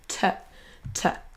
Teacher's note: Quand on l'abrège, c'est le son T et un son schwa derrière. Donc, comme si vous disiez te, te, ici.